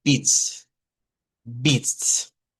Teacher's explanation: se hace una I corta, no es una I larga, para pronunciarlo